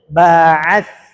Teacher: keluarnya ujung lidah dengan gigi seri atas jadi ketika dibaca lidahnya nampak kena ujung lidahnya